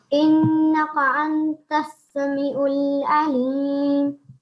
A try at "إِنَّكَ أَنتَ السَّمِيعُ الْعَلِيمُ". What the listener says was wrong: Innaka. Don't make a thick sound for this kaf, okay?